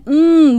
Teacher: so if a kid has an uh just that neutral uh we can close his lips now what sound do we have we have an m right